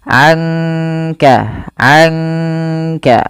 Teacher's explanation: langsung kepada makhraj dari huruf kafnya sambil ditahan dua harakat